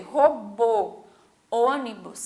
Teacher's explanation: robô, ônibus, que a gente fala mais para dentro com a boca um pouquinho mais fechada até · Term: som fechado